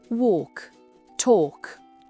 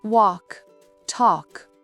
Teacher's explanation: Le L est souvent muet avant un K ou un D. Écoutez bien la voyelle, elle est longue.